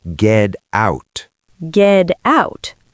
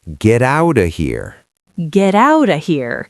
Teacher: When a T is between two vowels, it becomes a soft D. So get out becomes ged out.